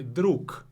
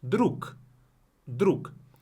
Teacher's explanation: You can hear the K at the end. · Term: voiceless pair